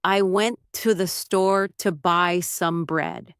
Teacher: For example, in the sentence, I went to the store to buy some bread, the stressed words are went, store, buy, and bread, while words like I, to, the, and some are unstressed and reduced. So it sounds more like I went to the store to buy some bread, with a rhythm that bounces between stressed and unstressed syllables.